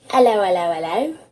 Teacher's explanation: listening to a cockney accent the first thing you want to do is drop the H at the start of words